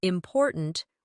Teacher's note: in the word important, we stress the second syllable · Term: word stress